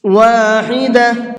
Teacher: حا کو حلق سے نکال کر کے پڑھیں گے۔